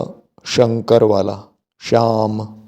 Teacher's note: तालव्य श श जिसमें जीभ जो है तालू में जाकर लगती है पूरी तरह से नहीं लगती लेकिन थोड़ी लगती है